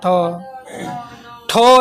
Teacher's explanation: हाँ, ठो, ठो एगो मूर्धा से, टो वर्ग वाला, टो वर्ग वाला ठो मूर्धा से